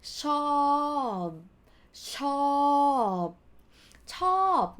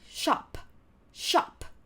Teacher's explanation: it has to be long sound with swallowed ending consonant sound